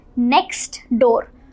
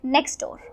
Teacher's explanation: So when we speak it in a flow, it can sound something like next door. So here T is getting merged. We're not really enunciating T in a different way. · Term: merged sounds